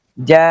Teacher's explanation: اب یہ مد اصل سے لمبی ہو گئی ہے حمزے کی وجہ سے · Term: مد فرعی